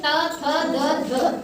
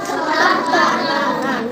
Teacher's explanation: अंदर से हमारी जुबान दांत को टच कर रही है